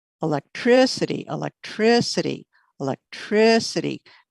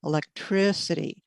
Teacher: can you hear that stronger stress on the third syllable